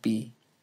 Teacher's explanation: consonant in b is simpler than the consonant and fee because only one articulator is involved the lips furthermore the english b sound is a stop a bilabial stop · the English B sound is a stop, a bilabial stop, in fact